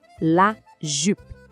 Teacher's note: O som do U aqui também pede aquele biquinho. É um som bem fechadinho.